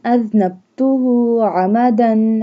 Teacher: عین حلق کے درمیان والے حصے سے ادا ہوتا ہے